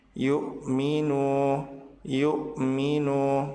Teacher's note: Nu dibaca panjang 2 harokat disebut sebagai mad tabi'i.